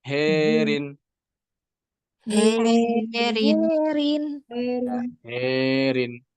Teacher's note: kalau qolun ya pada lafaz harin ya dia dibaca dengan imalah kubra saja